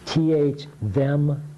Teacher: You stick your tongue out. This is the one that vibrates that uses your voice.